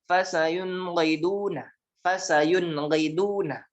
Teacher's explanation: Izhar dibacanya jelas, nun sukun dan tanwin dibaca jelas.